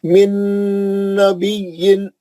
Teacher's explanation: सीधा सीधा नाक में आवाज जाके अच्छा गुन्ना करना नून का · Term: इदगाम नून